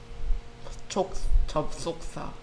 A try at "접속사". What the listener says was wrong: 접촉이야, 자꾸. 접속.